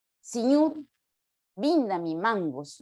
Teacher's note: en el quechua no se pueden pronunciar las vocales medias